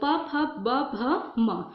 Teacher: प वर्ग में होता है, प, फ, ब, भ, म। होंठ से इसका उच्चारण होता है